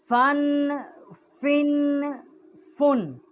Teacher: فا کا جو مخرج ہے یہ نیچے کے ہونٹ کا شکم ہے اور ثنایا علیہ کا کنارہ ہے